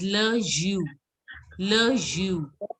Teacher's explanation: you don't have to pronounce the S. You have to pronounce it as Le Jus.